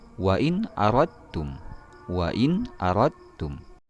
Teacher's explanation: Di sini ada nun mati bertemu dengan hamzah. Itulah dia hukum bacaan izhar halqi. Dia harus dibaca jelas.